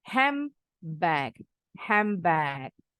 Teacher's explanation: Ini D-nya pasti silent. N-nya berubah bunyi. Nggak mengikuti bunyi B. Berubah bunyi jadi M.